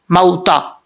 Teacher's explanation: واؤ ساکن ہے، واؤ ساکن سے پہلے زبر تو واؤ لین ہوتا ہے، یہاں پہ اس کو ایک الف کی مقدار لمبا نہیں کریں گے بلکہ نارمل طریقے سے